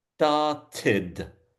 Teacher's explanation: So we get that strong ID sound at the end.